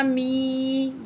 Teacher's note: یا مد ہے 1 پوائنٹ کھینچ کے پڑھیں گے